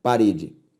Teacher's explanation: a sílaba tônica de parede re